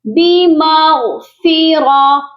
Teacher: غین بھی موٹا ہوگا اور را کو بھی ہم موٹا پڑھیں گے کیونکہ را کے اوپر زبر ہے